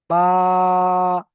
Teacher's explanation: যখন আটা বের হচ্ছে তখন কেউ কারো সঙ্গে লাগছে না। মুখের খালি অংশ থেকে আ বের হয়ে আসছে। বা উচ্চারণটা তো মুখের মানে দুটো দুটো ঠোটের ভিজ অংশ থেকে হচ্ছে। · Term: আলিফের উচ্চারণ